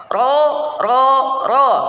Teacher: hindarkan adanya getaran takrir nah getarannya Cukup dua getaran saja ro itu enggak terlalu banyak ya ro ro ro cukup segitu